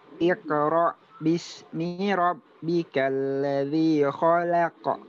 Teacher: Ya, di situ lamnya diapit dua huruf tebal, kho dan qaf. Ya. Yang tipis hanya lam. Jadi lam yang ikut tebal ya. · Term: lamnya tipis